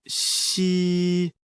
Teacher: like the English word she, but with the tongue touching slightly the bottom teeth. The pronunciation is assisted by the teeth.